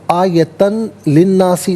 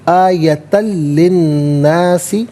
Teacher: آیتن لی الناسی، آیتن میں تا پر 2 زبر کی تنوین، اس تنوین کو لام کے ساتھ ملائیں گے، لام کی آواز کو ادا کیا جائے گا